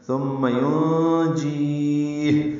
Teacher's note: ہا ساکن پہ وقفاً ہمس ہوگا، یعنی سانس جاری رہے گی اس کے پڑھتے ہوئے